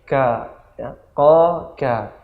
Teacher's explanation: di bagian pangkal ada huruf qa, naik dikit ka